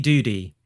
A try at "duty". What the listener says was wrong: I think you put your thumb on the scale, with pronouncing that T like a D.